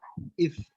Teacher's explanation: المخرج الأول أطراف الثنايا العليا مع بطن الشفة السفلى يخرج الفاء